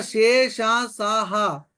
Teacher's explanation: అదేవిధంగా శేష, సాహ వీటికి ఏమని పేరు అని అంటే ఊష్మములు అని పేరు. ఊది పలకబడతాయి కాబట్టి వీటికి ఊష్మములు అని పేరు